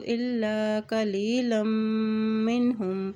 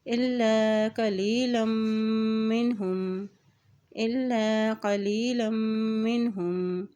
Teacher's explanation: लाम की दो ज़बर को मीम के साथ मिलाते हुए पढ़ेंगे क्योंकि मीम के ऊपर शद है और जब मीम के ऊपर शद आती है तो वहाँ पर गुन्ना भी अदा किया जाता है, इसलिए यहाँ पे गुन्ना अदा करेंगे।